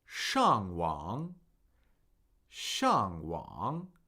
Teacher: we're going to listen for a falling tone and then a falling rising tone